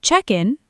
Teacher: Check in, noun, hyphenated, stress on check, equals the process, the desk.